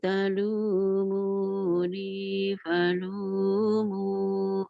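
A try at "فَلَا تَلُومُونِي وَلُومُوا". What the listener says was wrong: Bukan palumu, walumu. Fala talumuni walumu.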